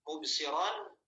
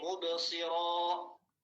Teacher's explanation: Jadi nunnya diganti dengan huruf alif. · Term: waqaf